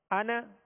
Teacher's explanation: آواز میں جنبش ہو رہی ہے جیسے قلقلہ ہوتا ہے